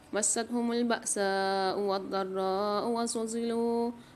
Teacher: بأساء میں سین کے ساتھ مد ہے تو یہاں 5 سے 6 الف کی مقدار سین کو کھینچیں گے